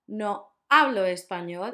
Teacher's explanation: the H doesn't make a sound